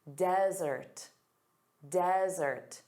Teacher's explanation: notice the syllable stress is on the first sound, da-da. Desert.